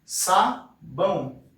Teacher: a gente tem o som do A e do O juntos, então isso é um ditongo.